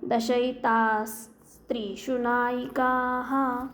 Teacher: विसर्गानंतर स आलाय मग तिथे उच्चार कसा करणार विसर्गाचा सच उच्चार करायचा